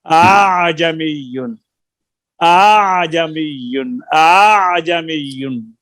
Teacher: آپ دوسرے حمزہ کو الف بھی نہ پڑھیں اور حمزہ بھی نہ پڑھیں، درمیان درمیان پڑھ لیں